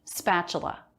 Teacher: notice the letter t here makes a ch sound